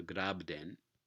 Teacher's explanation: And if you take the same stem here, grap, right, and you put it before this, I guess, gerundive suffix that begins with a voiced stop, you get, again, assimilation of both voicing and non-aspiration to the following consonant